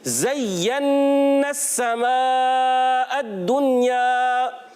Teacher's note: یا مشدد ہے، ذرا رک کر ادا کریں گے۔ کوئی بھی مشدد حرف آ جائے رک کر پڑھتے ہیں۔